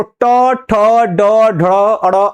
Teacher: ट जब आप बोल रहे हैं तो वो जाकर के ऊपर टच कर रही है यानी मूर्धा को टच कर रही है